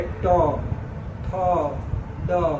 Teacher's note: जीभ मुड़ कर ऊपर जहाँ सट रहा है ना, उसी को कहते हैं मूर्धा।